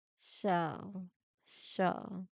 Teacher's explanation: Show, you glide it between an ah sound, the schwa sound, and an u sound. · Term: diphthong